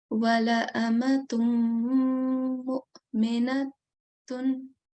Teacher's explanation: We do have to do a jerk on Hamza, but it has to be a soft jerk. Okay, we can't, if we do a very strong jerk, then the sound kind of sounds like Ain, the letter Ain.